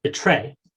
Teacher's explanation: So this occurs in onset and medial onset position in a word like betray. And so before R in onset clusters, Smith et al. Have noted that this stop, the alveolar stop, becomes a posterior affricate.